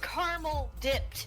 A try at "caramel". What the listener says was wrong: I was going to say it does sound closer to you saying carnal apples rather than caramel apples.